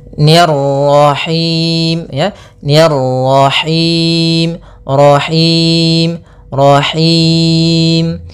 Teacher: rnya lagi tebal karena di sini ro tafkhim